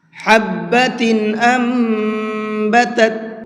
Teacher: ہا کو حلق سے نکال کر کے پڑھیں گے